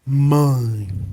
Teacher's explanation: o som do I que é representado pela letra e ele encerra a palavra ele não é tão forte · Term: semivogal